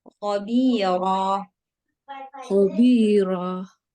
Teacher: Jangan ada hamzah di ujung.